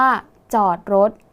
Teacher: คำว่ารถมีถถุงเป็นตัวสะกดใช่ไหมคะออกเสียงพยัญชนะท้ายเหมือนดเด็ก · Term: แม่กด